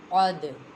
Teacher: دال بھی حروف قلقلہ میں سے ہے اور یہ ساکن ہے، اس میں قلقلہ خوب ظاہر ہوگا